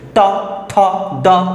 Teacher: তুমি দেখবা যে জিহবা গিয়ে দন্ত মূলে আঘাত করছে মানে দাঁতের যে পেছন দিকের যে মাড়িটা আছে ওইখানে গিয়ে আঘাত করছে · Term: দন্ত ধ্বনি